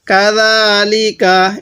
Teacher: এটা জিম না, এটা জাল, জালটা উচ্চারণের সময় একটু নরম করে উচ্চারণ করব।